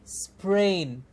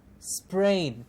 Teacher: The s and the p is a very short, very fused sound.